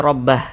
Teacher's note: Huruf H tidak dibaca panjang. Karena berhenti tepat di huruf yang tidak dibaca panjang, maka hurufnya itu kita sukunkan atau kita matikan sehingga dibaca rabbah.